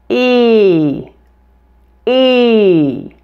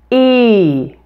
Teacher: did you notice the glide between the two sounds and how my mouth moves from slightly open to more closed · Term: long e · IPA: /i/